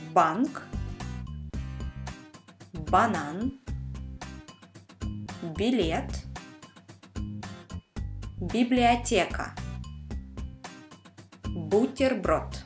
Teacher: When you say B, you make this sound using only your lips. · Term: only lips